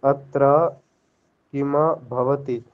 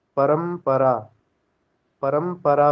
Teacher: प वर्ग का भ है ना भ तो अनुस्वार को भी म ही हो जाता है। · जो मकार के बाद अकार लगा रहे हैं ना आप ये इसमें थोड़ा दोष है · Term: आधे म